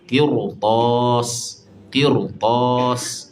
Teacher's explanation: Ha jadi kena tebalkan ra tu.